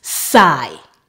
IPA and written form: saɪ (psy)